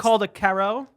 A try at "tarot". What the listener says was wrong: No, the first T you pronounce. The second T is silent.